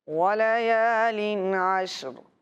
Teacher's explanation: وَلَيَالٍ کی تنوین میں غنہ نہیں ہونا چاہیے، اظہار کا قاعدہ ہے